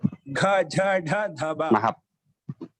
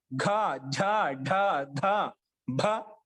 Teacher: ఘ ఝ ఢ ధ భ ఒత్తి పలుకుతామంట. అందుకే మహాప్రాణం అంట. ప్రాణశక్తి ఎక్కువ తీసుకుంటాం.